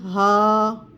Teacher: یعنی ہا کو ادا کرتے وقت زبان دانت کسی چیز سے ٹچ نہیں ہوں گے، سینے کی جانب سے آواز آئے گی